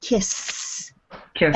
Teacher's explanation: Now put your hand on your throat and do S. Do you feel any vibration in your throat? No. So all of the sound is up in your mouth, and we call this an unvoiced consonant.